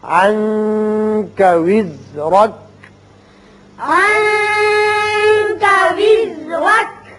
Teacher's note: یہاں نون کے بعد کاف حروف اخفا میں سے ہے، یہاں اخفا ہوگا نون پہ